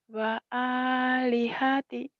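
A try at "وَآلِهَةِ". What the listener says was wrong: wa alihati panjang.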